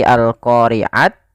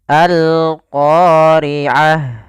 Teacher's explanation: ketika kita wakaf ini kita ganti dengan huruf ha yang dimatikan maka bukan lagi Al qoriat tapi alqoriah Nah jadi tidak lagi